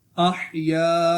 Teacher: یہ الف مدہ ہوگا اس کو بھی ایک الف تک کھینچ کے پڑھیں گے